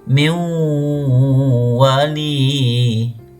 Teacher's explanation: Kalau ketemu dengan waw, maka nun sukunnya dimasukkan menjadi huruf waw.